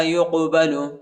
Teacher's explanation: قاف کو جھٹکے کے ساتھ پڑھیں گے، قلقلہ کریں گے